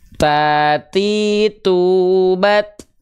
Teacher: pastikan dia nafasnya bukan mengalir nafas, ya, tapi hanya berupa percikan-percikan nafas saja